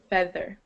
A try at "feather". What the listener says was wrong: Feather. Feather. Okay, good.